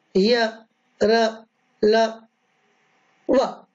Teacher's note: जिह्वा थोड़ा सा स्पर्श करती है और अपने स्थान पर आ जाती है। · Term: ईशत स्पष्ट